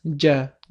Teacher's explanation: til o'rtasi va uning ro'parasidagi tanglay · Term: jim harfi